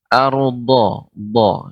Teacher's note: do ini adalah kedua tepi lidah mengenai gigi geram atas